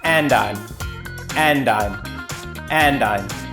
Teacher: There's a diminished D sound on and, which helps speed up these linked words.